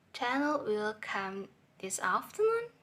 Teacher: Daniel is a flat voice level, and afternoon is high voice level.